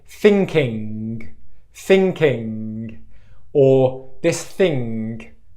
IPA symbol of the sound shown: ŋg